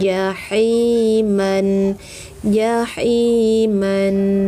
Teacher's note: ja, tengah lidah, tajam 'ha', tengah tenggorokan